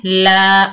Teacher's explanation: लाम के ऊपर खड़ा जबर, एक अलिफ की मिकदार खींच कर पढ़ेंगे